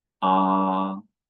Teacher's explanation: The first tone is high and level.